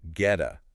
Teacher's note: get it becomes gheta flap t between vowels